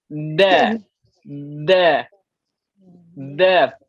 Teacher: hujung lidah itu perlu diletakkan di mana? Pangkal gigi kacip atas, bukan di langit-langit.